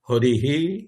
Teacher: এখানে ইকারের পরে বিসর্গ আছে, তাই হকারের সাথে ইকার যুক্ত হয়ে হরিহি এরকম উচ্চারণ হবে